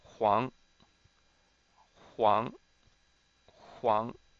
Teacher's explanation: this is second tone, rising tone